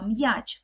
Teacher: перший звук м приголосний твердий